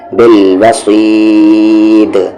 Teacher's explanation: आवाज़ को बाउंस करेंगे, क्योंकि दाल पे जज़म आ गया